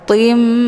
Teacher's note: harokat tanwinnya dileburkan ataupun dimasukkan ke dalam huruf mim dengan cara ditekan kemudian ditahan lebih kurang 2 kali ketukan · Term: idgham bi gunnah